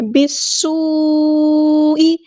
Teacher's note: بالسوء، با کو ہم نے سین کے ساتھ ملا دینا، حمزۃ الوصل ہمارا ڈراپ ہو جائے گا. سین یہاں پہ اس کی سٹی واضح کرنی ہے، حروف صفیریہ میں سے. اور مد دکھ رہی ہے ہمیں، یہ ہمارے پاس کنیکٹڈ مد ہے، مد متصل ہے، جڑی ہوئی مد ہے، اسی کلمے میں مد ہے، اسی کلمے میں حمزہ ہے.